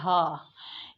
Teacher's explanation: इसमें हमारा जो है ग्लोटिस ओपन होता है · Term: ग्लोटल कॉन्सोनेंट्स